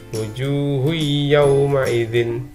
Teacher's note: Jadi huruf H ini dimasukkan ke dalam huruf ya, bukan wujuhun tapi wujuhui masuk ke dalam ya, wujuhui yauma idzin. Jadi ada dhammah tain bertemu dengan ya, maka dibaca dengung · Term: idgham